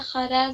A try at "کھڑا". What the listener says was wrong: خرا نہیں ہے، کھڑا ہے. کھا. ہاں کھا ہے. کھا خا نہیں، کھا.